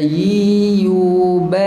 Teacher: Kalau ya berbaris tengah lidah dengan pertengahan langit bahagian hadapan.